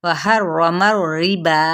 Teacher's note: रा यहाँ पे पुर होगा क्योंकि रा तशदीद है ऊपर और फिर ज़बर है